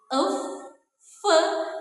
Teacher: Nah, bunyi frikatif ini adalah bunyi ya yang dihasilkan nih tadi melalui bibir bawah dan juga gigi atas, tetapi aliran udaranya itu dia keluar melalui celah sempit antara bibir bawah dan juga gigi atas sehingga menimbulkan sebuah gesekan · bunyi bahasa yang dihasilkan melalui pertemuan antara bibir bawah sebagai artikulator aktif bertemu dengan gigi atas sebagai titik artikulasi atau artikulator pasif. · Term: bunyi labiodental